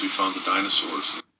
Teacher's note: he didn't pronounce the D at the end of found. He actually ended up saying found the. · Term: elision